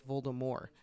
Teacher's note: you don't pronounce the consonant at the end of the word